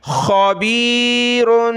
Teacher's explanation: خا کو گلے سے نکالا